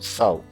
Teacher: Eu abro a boca no A, quando eu estou fechando, eu formulo o U ali e já acaba a sílaba.